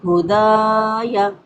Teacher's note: دا پہ الف مدہ ہے، 1 سے 2 حرکات کھینچ کے پڑھا جائے گا۔